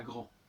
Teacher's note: dans le grand, on n'entend pas le D